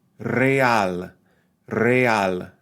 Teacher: pronouncing those vowels, that vowel combination in two distinct syllables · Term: hiatus